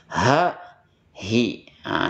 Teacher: kalau aksal halq yaitu pangkal tenggorokan hurufnya H antara angin dan suara keluarnya berbarengan